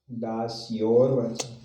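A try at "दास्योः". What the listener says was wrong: Still light. Dasyoh. Dasyoh. Why is it lightly doing it?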